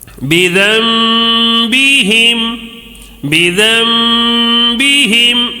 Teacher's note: نون ساکن ہے، نون ساکن نظر آ رہا ہے، نون کے اوپر سکون ہے تو اس کے بعد با آ گیا ہے، تو اب یہ نون ساکن کو میم سے بدل دینا ہے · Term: اقلاب